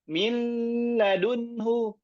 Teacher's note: tatkala mengucapkan huruf lam itu ada gunnahnya. Terutama huruf lamnya itu sebelumnya ada huruf mim.